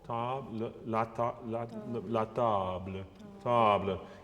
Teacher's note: I would make it a slightly darker vowel